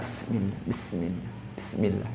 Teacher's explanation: safir memiliki bunyi yang tajam, 'bis', dan juga memiliki ham, di mana napas dikeluarkan, dan rakhawah, di mana bunyi tersebut berlanjut